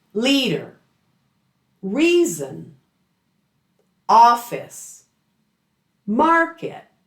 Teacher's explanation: So, people, places, things, or ideas. They're usually stressed on the first syllable.